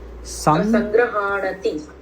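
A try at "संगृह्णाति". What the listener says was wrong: Sangrah, not graha. Gruha. Sangrihnati. Only half hakara. Sangrihnati.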